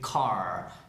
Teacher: no es tanto que sea importante la vocal, sino la consonante, la R, que sea muy larga, y la C, que explote mucho. Si haces que la C explote como una K, y la R sea súper larga, ahí te va a sonar la vocal tal cual es, sin preocuparse mucho en decir la A o decir la E, porque no es ninguna de esas, es algo así neutral en la mitad.